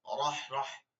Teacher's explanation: রতে জবর আছে, পুর করে পড়তে হবে মোটা করে